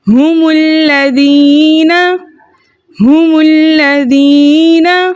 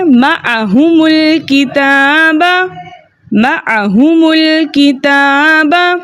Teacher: جمع کی میم کو ہم نے غمہ دے دیا یعنی پیش دے دیا، حمزۃ الوصل درمیانی کلام میں آنے کی وجہ سے حذف ہو گیا۔ اب اسلام مشدد میں چھپے لام ساکن کو ہم جمع کی میم کو جو ہم نے پیش دیا تھا اس سے ملا کے پڑھیں گے۔